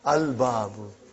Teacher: Is it moon letter or sun letter? Moon letter. You did pronounce lam.